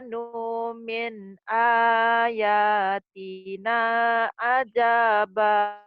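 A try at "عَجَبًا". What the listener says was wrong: Ajaba. Pendek. Ajaba.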